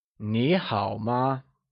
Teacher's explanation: in ni hao, ni is spoken using the second tone